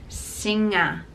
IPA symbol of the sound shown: ŋ